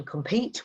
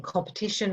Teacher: in compete, we hear a long e sound and in competition, we almost have that schwa